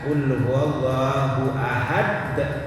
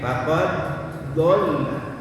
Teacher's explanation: Faqad dalnya huruf qalqalah tapi kecil.